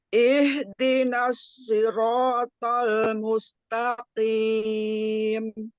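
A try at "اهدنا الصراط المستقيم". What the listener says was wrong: Masih sin Iya, Bu, masih.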